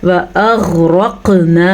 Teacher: ग़ैन को भी मैंने पुर पढ़ा और क़ाफ़ को भी पुर पढ़ा और क़ाफ़ पे कलकला भी किया